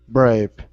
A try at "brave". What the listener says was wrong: i pronounce a v you're pronouncing a b saying braid okay so your top teeth need to go on your bottom lip